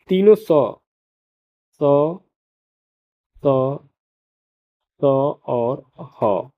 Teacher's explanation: इन वर्णों का उच्चारण करते समय वायु मुख के विभिन्न भागों से रगड़ खाकर निकलती है जिससे कि ऊष्मा गर्माहट पैदा होती है। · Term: उष्म व्यंजन